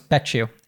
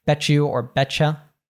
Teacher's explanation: And then something really interesting that happens here is oftentimes when we have a T plus a Y in American English, we change it, it morphs into a -ch- sound.